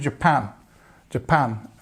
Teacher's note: And we've got the stress on the second part of that word.